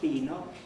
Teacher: Here it's got an unaspirated P at the beginning